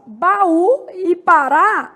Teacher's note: As duas apresentam como sílaba tônica a última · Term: palavras oxítonas, oxítonas